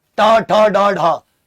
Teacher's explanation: ट जीभ उल्टी हो गई मूर्धा